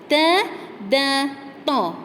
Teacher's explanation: lidah kita menyentuh di bahagian atas belakang gigi. Okey, belakang gigi atas tu.